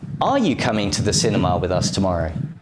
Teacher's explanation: you emphasize the word are because you thought your friend couldn't come and you're showing surprise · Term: strong form